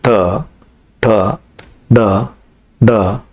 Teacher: ನಾಲಿಗೆಯ ಹಿಂದೆ ಚಾಚಿ ಬಾಯಿಂದ ಮೇಲ್ಭಾಗವನ್ನು ಸ್ಪರ್ಶಿಸಿದಾಗ ಉಚ್ಚಾರಗೊಳ್ಳುತ್ತವೆ